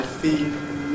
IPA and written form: fiːl (feel)